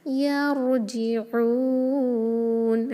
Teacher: عین کو کلیئر وسط الحلق سے، اور اس کو 2 یا 4 یا 6 حرکہ اسٹریچ کر سکتے ہیں اکارڈنگ ٹو مد العارض للسکون انشاءاللہ۔